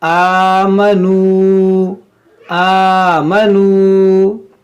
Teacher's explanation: واو ساکن سے پہلے پیش ہے، یہ واو مدہ ہے، تو اس کو بھی ہم کھینچیں گے